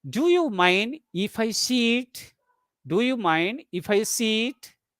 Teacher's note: in yes no questions we use Rising tone